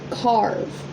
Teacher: You don't hear the A. The R makes the sound.